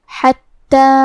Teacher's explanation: حرف الحاء کی ادائیگی حلق کے درمیان والی حصے سے ہے. پھر حرف تا پہ تشدید ہے تو ہمیں تا کو 2 حرف کے برابر پڑھنا ہے کیونکہ تشدید کی اصلیت 2 حرف ہے.